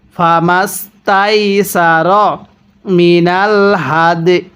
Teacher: এখানে ওয়াকফ করলে ইয়াটা হালকা উচ্চারণ করব, দালটা পরিপূর্ণ উচ্চারণ করব